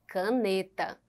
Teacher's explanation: a sílaba forte é a penúltima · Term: paroxítona